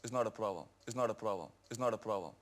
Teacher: he pronounced the P sound, but the R sound after it was very, very subtle. So subtle that you couldn't really hear it.